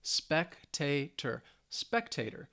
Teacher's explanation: it has three syllables and the stress is on the first syllable